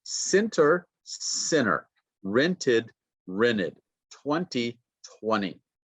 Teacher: So the T sound disappears.